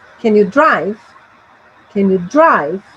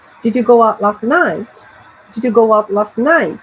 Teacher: yes or no questions have rising intonation at the end